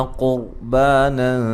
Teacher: را ساکن سے پہلے پیش ہے، را کو بھی موٹا ادا کریں گے